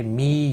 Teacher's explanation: یا مدہ ہے، 1 الف کے برابر کھینچ کر پڑھیں گے، اور نون وقف کی صورت میں نون ساکن پڑھا جائے گا، وقف بالاسکان ہوگا، 3 سے 5 الف کے برابر کھینچ کر وقف کریں گے۔